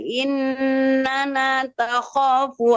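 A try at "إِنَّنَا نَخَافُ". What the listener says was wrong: Bu, bukan takha tapi nakha.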